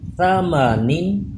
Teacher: تھا پہ سیٹی پیدا نہیں ہوگی، زبان اوپر کے دانتوں سے چپکا کے پھر پڑھیں